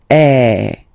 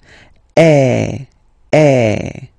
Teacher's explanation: the sound is really open, and normally your mouth should be opened a little bit more than with the accent aigu as well